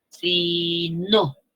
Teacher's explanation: el sí tiene la menor fuerza de voz y el no tiene la mayor fuerza de voz